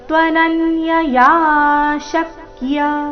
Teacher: ತ್ವನನ್ಯ ನ ಮೇಲೆ ಆಘಾತ